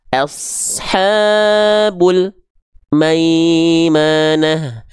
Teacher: jangan sampai ada jarak di antara bunyi Al dan bunyi Maknya contoh Ashabul maimanah antara bunyi Al dengan bunyi Ma jangan sampai · Enggak terputus huruf lam sukunnya. Karena lam enggak punya sifat syiddah, tapi dia tawasud, masih ada aliran suara yang mengalir ketika al dilafalkan. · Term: tawassut